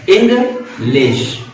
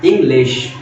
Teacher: इंग आपका समझ लो डिसेंडिंग प्रोसेस में है, मतलब स्टेबल प्रोसेस में है, और लिश थोड़ा सा असेंडिंग है, इंग्लिश। तो देखा, इंग्लिश, एक इंग आपका समझ लो एक डिसेंडिंग प्रोसेस मतलब स्टेबल फॉर्म में है वो, और लिश थोड़ा सा खींचते हुए असेंडिंग फॉर्म में, चढ़ते हुए अंदाज में है, आरोही क्रम में है।